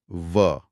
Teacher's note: ऊपर के दांत नीचे के होंठ को छू रहे हैं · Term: दंतोष्ठ्य